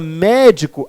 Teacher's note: E na palavra médico, a antipenúltima é a mais forte.